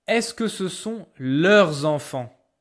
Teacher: But if you have a vowel after this word, or after this word, here you will hear the S because you will do the liaison